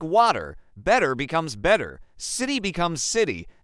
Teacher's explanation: a T sound falls between two vowel sounds, it often turns into something called a flap T. It's a very soft D sound. So, the word water doesn't sound like Washington, it sounds like water.